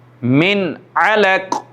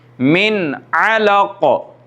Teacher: नून साकिन या नून तनवीन के बाद, यानी कि नून साकिन हो ज़बर ज़ेर पेश के बग़ैर या 2 ज़बर 2 ज़ेर 2 पेश के बाद, अगर इन 6 हुरूफ में से कोई एक हर्फ आता है तो वहाँ पर जल्दी से ज़ाहिर करके नून साकिन और नून तनवीन को पढ़ा जाएगा। इसकी एग्ज़ाम्पल ये है, जैसे कि मिन अलक, नून साकिन है और नून साकिन के बाद हुरूफ़ हल्की में से आइन आ रहा है, तो यहाँ पे हम इख्फ़ा नहीं कर सकते, गुन्ना नहीं कर सकते, बल्कि नून को ज़ाहिर करके पढ़ेंगे, मिन अलक। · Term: इज़हार